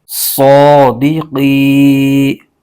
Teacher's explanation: یہ قوف بھی حروف مستعلیہ کا حرف ہے، اس کو بھی موٹا پڑھنا ضروری ہے